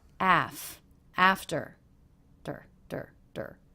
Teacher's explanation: the second syllable very low in pitch flat and quick